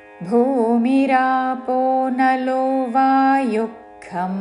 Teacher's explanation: वायुः महाप्राणाक्षरము భూమి రాపో రాపో రెండు దీర్ఘములు నలో భూమిరాపో నలో వాయుక్ విసర్గ తర్వాత ఖ ఉన్నది కాబట్టి శ్వాస వదులుతూ ఖ లాగా ఉచ్చారణ చేస్తూ భూమిరాపో నలో వాయుక్ ఖం మనో బుద్ధిరేవ చ ఖం మహాప్రాణాక్షరము ఖ ఖం